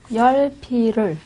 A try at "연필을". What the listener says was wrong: 연필을. 네, 열이 아니고 연이에요. 연필을.